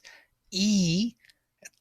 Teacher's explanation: the tongue is pressing already to the top to the palate to the hard palate it's the most intense state of our tongue